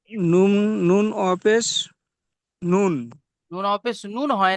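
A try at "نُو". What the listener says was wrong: নুন ওয়াও পেশ নুন হয় না, নুন ওয়াও পেশ নু।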